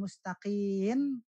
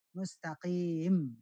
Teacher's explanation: Bukan mustaqin tapi mustaqim bibirnya rapat